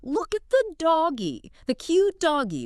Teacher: Your pitch goes up three octaves. You stretch out your vowels and you exaggerate your facial expressions like look at the doggy, the cute doggy. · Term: child directed speech